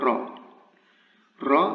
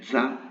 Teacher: the sound R here is darker. It's something we call emphasis, tafkhim, and the letter, the vowel itself, sounds differently.